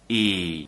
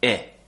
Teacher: The 2 sounds are very similar. For the long vowel, the tongue is higher, as I said, and for the short vowel, the tongue is just below the top teeth. So it's just near the sharp edge of the top teeth, kind of floating in the mouth, and we don't smile as much.